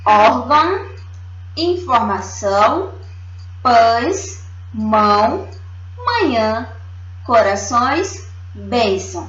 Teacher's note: indica a pronúncia nasal, é como se a gente estivesse falando pelo nariz. Órgão, informação, pães, mão, manhã, corações, bênção, certo?